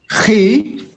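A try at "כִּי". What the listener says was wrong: It's a kaf, not a chaf. Ki.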